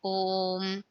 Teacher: इसे बोलने में दो से ज्यादा मात्रा का समय लगता है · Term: प्लुत स्वर